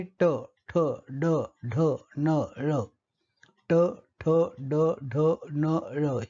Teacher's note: ज्या ध्वनीच्या उच्चारणामध्ये मूर्धा म्हणजे पश्च कठीण टाळू हे उच्चारण स्थान असतं त्यांना मूर्धन्य ध्वनी असं म्हणतात